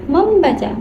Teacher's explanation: bunyi M dan B sama-sama dihasilkan oleh kedua bibir sehingga diucapkan secara berurutan atau bisa disebut juga mengalami keluluhan. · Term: asimilasi